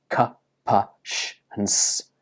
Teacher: So we don't use our vocal cords to make an unvoiced sound. If you touch your throat and say these words, k, p, sh, and s, you can't feel any vibration in your throat. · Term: unvoiced consonant sounds